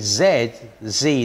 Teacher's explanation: there's the vocal cords vibrating and we call that a voiced sound